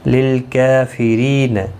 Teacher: للکافرین لام ساکن کو ہلانا نہیں، کاف کے اوپر کھڑی زبر ہے، ایک الف کی مقدار کے برابر کھینچ کر پڑھیں گے